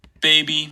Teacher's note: trying to say that word baby without any creaky voice so my B at the beginning is actually unvoiced because I'm not a speaker of Armenian the one in the middle is voiced because it's in between two vowels